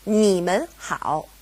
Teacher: because we have mun separating ni and hao, they both go back to being third tone